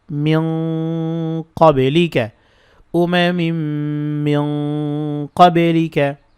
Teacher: নুন সেকেন্ডের পরে কফ আসছে এটি কিন্তু ইখফা গুন্না এবং গুন্নাটা মোটা হবে কফের দিকে যাবে